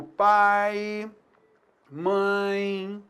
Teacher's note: a gente vai chamar de ditongo decrescente aquele som que decresce como eu tenho a vogal e na seqüência eu tenho a semi vogal o som vai caindo